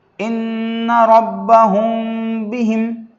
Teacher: اس مثال میں میم ساکن کے بعد با آیا ہے، اس کو اخفاء شفوی کہتے ہیں، اور میم ساکن کے بعد با آنے کی وجہ سے غننے کے ساتھ اخفاء ہوگا۔